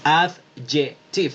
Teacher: la D de dedo no suena